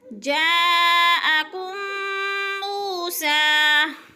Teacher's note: جاءکم پہ مد متصل، 4 حرکات کے برابر مد متصل کو لمبا کر کے پڑھتے ہیں